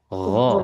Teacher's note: huruf ghin dia lebih dalam lagi, lebih dalam ataupun dekat dengan lidah kecil ya